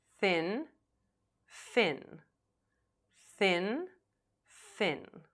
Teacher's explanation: Your tongue, not your lower lip, slightly touches your top front teeth or else it will sound like F.